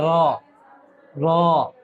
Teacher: आवाज को पूरा मोटा करना है, आवाज को मुंह भर के निकालना है